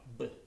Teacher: if I say B, my mouth completely closes, I occlude all the air, and it kind of pops on the way out.